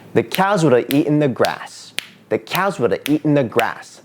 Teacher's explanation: See, I intuitively still put COWS and EAT and GRASS on the rhythm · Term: stress